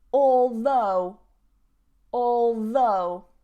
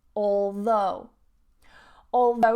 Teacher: notice that stress on the second syllable